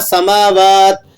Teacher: سماواتی لفظ تھا، ہم نے وقف کی وجہ سے اس کو ساکن کر دیا